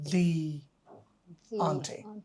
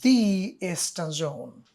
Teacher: ইস্টার্ন এটা ই একটা ভাওয়াল sound, একটা ভাওয়াল সাউন্ড, সুতরাং এটা উচ্চারণ হবে দি ইস্টার্ন জোন